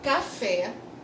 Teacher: você tem aqui o Fé como uma sílaba forte